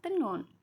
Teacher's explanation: bunyi sengau dorsovelar bersuara